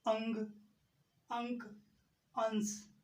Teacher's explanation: नाक से तो अधिक सांस निकलते है लेकिन मुख से कम सांस निकलते है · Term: अनुस्वार